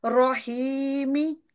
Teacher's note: را کے اوپر فتح، اس کو ہم پر کر کے موٹا پڑھیں گے۔